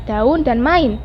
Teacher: Kedua vokal itu termasuk dalam dua suku kata yang berbeda. Misalnya, bunyi deretan AU dan AI pada kata daun dan main bukanlah diftong karena A maupun U atau I masing-masing mendapat tekanan yang hampir sama dan membentuk suku kata tersendiri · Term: deretan vokal